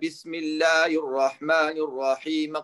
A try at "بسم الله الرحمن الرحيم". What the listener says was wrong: Nee, nu is het een kasra op de mim, hè? كسر عبد الميم الرحمن الرحيم قرا